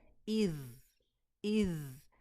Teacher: और इसमें हमारी ज़ुबान की नोक बिल्कुल, जो बहुत थोड़ी सी नोक का ऊपर का जो हिस्सा होता है वो हमारे ऊपर के सामने के 2 दांतों के किनारे पे लगता है। और जब ज़ा साकिन आए तो हमने वहाँ पे उसको होल्ड करना है, पकड़ के रखना है, एकदम से टच करके मखरज को नहीं जाना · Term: रनिंग साउंड